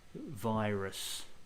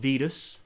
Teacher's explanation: So that's got a diphthong in there, the I. Again, not vidus.